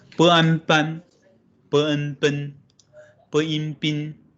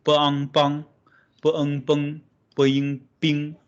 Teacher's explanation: So there's a nasal back sound.